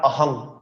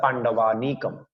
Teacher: অনুসার যখন কোনো শব্দের শেষে বসবে তখন অনুসার উচ্চারণ ময় হসন্ত করতে হবে।